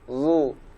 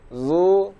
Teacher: Huruf zo yang berharokat dhammah, maka kita ucapkan di rahang tebal. Zu. Sedangkan zai berharokat dhammah, kita ucapkan dari rahang tipis